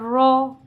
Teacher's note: نون زبر نا، نون زیر نی، نون پیش نو، نا نی نو. رو زبر رو، رو کے اوپر جب زبر ہوگا تو ہم رو کو موٹا پڑھیں گے. رو زبر رو، رو زیر ری.